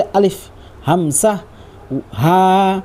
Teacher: अलिफ हमसा हा ये तीनों हरूफ हलक के नीचे वाले हिस्से से अदा होता है।